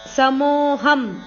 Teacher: ಮೋ ಆದಮೇಲೆ ಅವಗ್ರಹ ಇದೆ ಮೋ ಅಕ್ಷರವನ್ನು ಸ್ವಲ್ಪ ದೀರ್ಘ ಹೇಳಬೇಕು